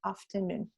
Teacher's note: el acento en afternoon va en la última sílaba, tiene un doble acento